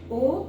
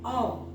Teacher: ओ होठ को पास लाकर गोल ऐसा करेंगे ओ, और औ के लिए थोड़ा मुंह खोलेंगे ओ औ। इसी प्रकार से ए और ए का उच्चारण भी है।